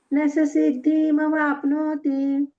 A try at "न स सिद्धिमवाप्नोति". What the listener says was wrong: हा, सिद्धी नंतर म पटकन म्हणा. न स सिद्धिमवाप्नोति. ती दीर्घ नाही करायचा. न स सिद्धिमवाप्नोति. हा, नो मोठा करायचा आणि ती मग आपोआप लहान होतो. न स सिद्धिमवाप्नोति.